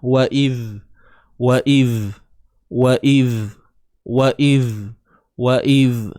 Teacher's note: Huruf zal ni kena keluar hujung lidah tuan-puan. Huruf zal kena keluarkan hujung lidah